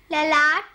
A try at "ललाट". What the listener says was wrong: ललाट बोलते हैं, विसर्ग लगाए ना, सही उच्चारण करिए, बोलिए